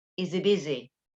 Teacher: the sound in he, when it is used in connected speech, is normally dropped.